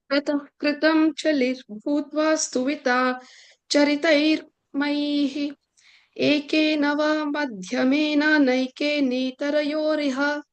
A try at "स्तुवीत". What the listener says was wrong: That first line, third word, stuvita, long e, okay?